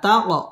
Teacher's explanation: তাক কলকলা ধাক্কা দিয়ে পড়তে হবে